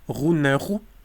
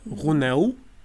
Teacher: so it's disappearance of r and replacing by w